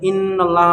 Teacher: ان اللہ میں گنہ اس لیے کریں گے کیونکہ نون کے اوپر تشدید ہے